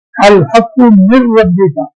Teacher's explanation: الحق من ربک میں نون ساکن کی آواز کے بعد را آ گیا ہے تو نون ساکن کی آواز بالکل بند ہو گئی، ہم ادغام تام ہو گیا یہاں.